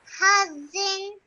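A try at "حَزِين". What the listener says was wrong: Again, make sure you stretch that nasal sound at the end for 2 seconds. Hazin.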